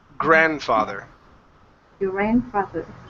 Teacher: do not pronounce the d The D is silent